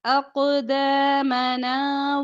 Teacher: وثبت اقدامنا قاف پر کلکلا